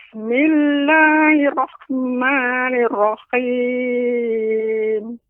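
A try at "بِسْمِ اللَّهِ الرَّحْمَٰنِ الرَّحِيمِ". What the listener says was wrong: Ya, ra-nya ya lebih ditasydidkan lagi, Nek. Lebih ditampakkan tasydidnya. Bismillahirrahmanirrahim.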